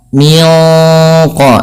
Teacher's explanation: ketika kita melafalkan juga ikhfa yang kepada huruf qaf, itu ditebalkan menyesuaikan dengan sifat huruf qafnya yang tebal. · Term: ikhfa hakiki